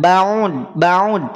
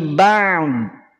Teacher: Ain tipis, udhad tebal. Ba'd. Maka jangan ba'ud, tapi ba'd.